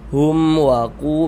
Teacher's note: Baca jelas enggak berdenggung, pendek saja. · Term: izhar syafawi